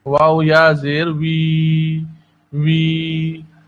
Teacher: واو کی ادائیگی ہونٹوں کی گولائی سے ہوتی ہے، اس کو فا کے مخرج سے پڑھنا غلط ہے